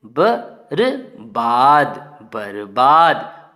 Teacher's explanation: बा के पहले हमें आधे रा का उच्चारण करना है